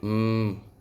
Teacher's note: put your hand on your throat and say m feel that buzz. That's your larynx turning raw air into sound waves. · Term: voice sounds